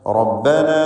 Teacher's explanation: റബ്ബന എന്നതിലെ അലിഫിൻ്റെ ദീർഘം മദ് മുൻഫസിൽ ജായിസാണ്. 4-5 ഹറക്കത്തിൻ്റെ അളവിൽ ദീർഘിപ്പിക്കുക.